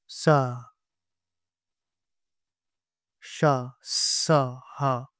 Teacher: जिन वर्णों का उच्चारण रगड़ और घर्षण से उत्पन्न ऊष्म वायु से होता है उसे ऊष्म व्यंजन कहते हैं, जैसे स, श, स, ह।